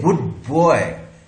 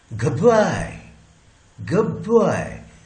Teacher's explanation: So this boy, b sound, this b sound has the effect on d, and this b has changed this d into b